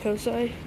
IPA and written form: ˈkoʊsaɪ (COSI)